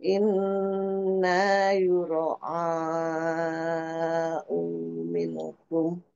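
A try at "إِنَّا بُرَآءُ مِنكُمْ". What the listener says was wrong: Bu ya, buro'a itu empat harokat, buro'a bukan yuk, buro'a minkum. Maknya dua harokat, innya juga guna, inna.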